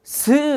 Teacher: 터트리면서 마찰이 나는 소리. 마찰 그냥 터지는 게 아니고 스 갈리듯이 이렇게 마찰이 나는 소리